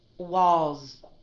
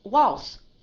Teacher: Did you hear that long duration with the Z?